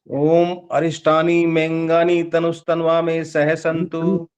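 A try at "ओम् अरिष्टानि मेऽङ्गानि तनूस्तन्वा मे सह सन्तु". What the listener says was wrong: तनवा कर रहे हो ना, यही तो बोला, तनुज तनवा में, बड़ा ऊ की मात्रा है तो तनुज तनवा में बोलना।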